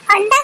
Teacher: अंडा जब अंग का प्रयोग करते हैं हम तो हमारी जीभ को ऊपर तालू में सटाते हैं।